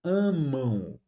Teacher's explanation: O A fica um A nasal e o M vira U.